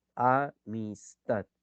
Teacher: en tat está recayendo la mayor intensidad. Entonces, la sílaba tat es la sílaba tónica.